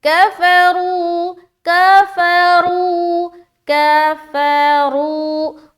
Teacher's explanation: را کو واو سے ملاتے ہوئے ہم کر رہے ہیں واو مدہ، ایک الف کے برابر کھینچ رہے ہیں اور کھینچتے ہوئے ہماری را موٹی رہے گی